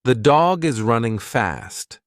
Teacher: For instance, in "the dog is running fast," the words dog and fast are stressed more than the and is